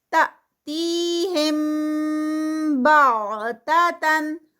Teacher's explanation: تأتیہم بغتتن، یہاں پر جو ہے وہ آگے جزم پہ ہے تو یہاں پر جرک لگے گا. تی جو ہے یہ یا مدہ ہے 2 کاؤنٹس کی، ہم پہ ہم رکیں گے، اخفاء شفوی ہوگا، یہاں پر 2 کاؤنٹس.